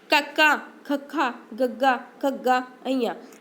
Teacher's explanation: ਕਕਾ ਖਖਾ ਤਾਂ ਆਪਾਂ ਕੀ ਹੈ ਆਪਣੇ ਕੰਠ ਤੋਂ ਬੋਲਿਆ ਜਾਂਦਾ ਹੈ। ਤਾਂ ਇਸ ਕਰਕੇ ਇਸਨੂੰ ਕੀ ਹੈ ਕੰਠ ਧੁਣੀ ਵੀ ਕਿਹਾ ਜਾਂਦਾ ਹੈ।